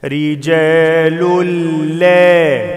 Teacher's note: تنوين بعد لام إدغام بدون غنة